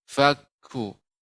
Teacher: kaf ini juga huruf yang hamas ya. Adanya aliran udara.